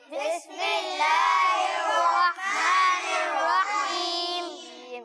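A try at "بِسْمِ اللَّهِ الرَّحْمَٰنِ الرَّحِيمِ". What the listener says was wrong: ہاں, رحمان اور رحیم کی جو ہا ہے اس کو ہم نے واضح کرنا ہے نا. تو دوبارہ پڑھ لیں. بسم اللہ الرحمن الرحیم.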